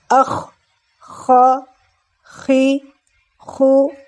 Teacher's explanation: आइए हम सीखते हैं हरफ ख्वा का मखरज है अदना-ए हलक यानी हलक का सबसे ऊपर वाला हिस्सा जो मुंह की तरफ होता है। जब हम हलक के उस हिस्से से हवा को रगड़ कर निकालते हैं तो ख अदा होता है